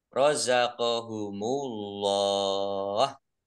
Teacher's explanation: Allahnya dibaca tebal karena harokat di depannya dhammah